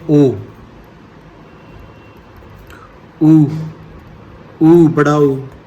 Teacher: पश्च स्वर जिन स्वरों के उच्चारण में जीभ का पिछला भाग सामान्य स्थित से उठता है